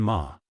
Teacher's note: Neutral tone, short and light